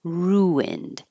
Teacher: So we started with a request for ruined, and this is one of those words that has a intrusive W, or I call it an invisible W, or sometimes a hidden W. When your lips go from a rounded sound like oo to an unrounded sound like ruined, then a W should appear naturally.